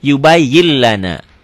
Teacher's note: Yubayyin lana dibacanya jadi n-nya hilang. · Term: idgham bila gunnah